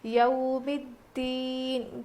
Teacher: اب یہ یو نہیں ہے بلکہ یو ہے، حروف لین ہے نا، اس لیے ہم نرم آواز کے ساتھ جلدی ادا کر کے پڑھیں گے. یو ہوتا ہے، یا واو زبر یو نہیں بلکہ یا واو زبر یو ہوتا ہے.